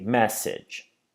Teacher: And finally, we have message, which has 2 syllables, and we say message. and the stress is on the first syllable. It's message, not message.